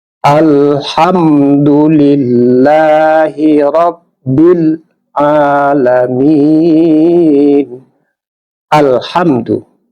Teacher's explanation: Di alif lam yang bertemu dengan salah satu huruf qamariyah, maka alif lamnya dibaca jelas. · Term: alif lam qamariyah